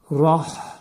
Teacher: Burada ra təxvim oxunur, qalın oxunur.